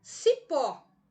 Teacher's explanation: Eu descobri que a sílaba tônica da minha palavra cipó recai na última sílaba, uma palavra oxítona. Ela termina em O.